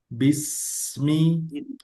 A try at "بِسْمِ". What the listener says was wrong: Nah, dijaga kasrohnya. Sempurnakan ke i. Bismi.